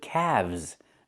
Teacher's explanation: The L is silent and we pronounce the V sound with vibration plus the Z sound like zebra.